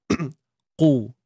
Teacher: Untuk qaf baris depan pastikan kita tebal.